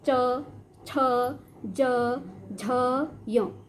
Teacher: जीभ का जो ऊपर का स्थान है तालु, तो हमारी जीभ कहाँ स्पर्श कर रही है? ऊपर तालु में स्पर्श कर रही है।